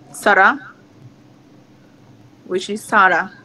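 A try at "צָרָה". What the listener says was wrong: No, actually, this is with a tzadi, Sarah. It's not the name Sarah. Sarah would start with a sin.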